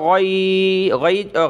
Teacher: غین جو ہے موٹے حروف میں سے ہوتا ہے، گلے سے